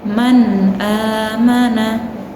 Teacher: Nun bertemu dengan huruf alif atau hamzah. Maka harus dijelaskan huruf nunnya.